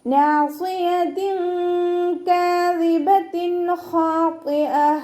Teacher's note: ത മർബൂത്തയിൽ നിർത്തുമ്പോൾ നമ്മൾ ഹ സുക്കൂനാക്കി കൊടുത്തുകൊണ്ട് നിർത്തി കൊടുക്കുക കേട്ടോ.